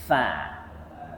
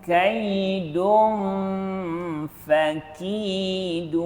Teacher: Fa tu betul-betul letakkan hujung gigi kacip atas kita ni, letakkan perut bibir bawah.